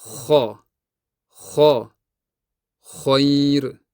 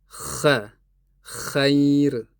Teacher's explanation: Bu paytda tilning orqasi ko'tarilgan bo'ladi. Tilning oʻrtasi esa pastga tushgan bo'ladi. Agar tilning orqasini ko'tarmasak, tovish ingichka chiqadi. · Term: isti'la sifati